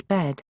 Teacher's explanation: an open-mid front unrounded vowel similar to General American English bed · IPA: /ɛ/